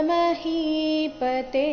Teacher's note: ಇಲ್ಲಿ ಹಿ ದೀರ್ಘ ತೆ ಸಹ ದೀರ್ಘ ಇದೆ